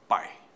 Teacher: o A é vogal, o I é semivogal, o ditongo agora é decrescente